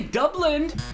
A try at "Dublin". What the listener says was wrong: Wait, there's no D at the end of that. Try it again. Dublin, not Dublin.